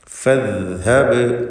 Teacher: ബഇൻ്റെ സുക്കൂൻ ഖൽഖല സുഗ്റ നൽകി ശബ്ദം ഹറക്കത്ത് പോലെ ചലിപ്പിക്കുക